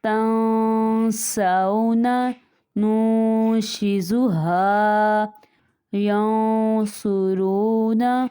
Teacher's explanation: یہاں پہ نون ساکن کے بعد حروف اخفا میں سے آ گیا، یہاں پہ اخفا کریں گے یعنی غنہ کریں گے